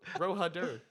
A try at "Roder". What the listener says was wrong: Roder. The ha is silent. It's Roder.